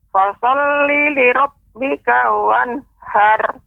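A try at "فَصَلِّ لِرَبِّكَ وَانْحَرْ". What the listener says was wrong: Nah, kalau Nek ucapkan wanhar, maka di situ belum ada tebalnya roknya, masih tipis har. Nah, har ini harus kita naikkan. Har. Naik dia lidahnya ke atas. Har. Kalau har, maka roknya rok tipis har. Harus dinaikkan har.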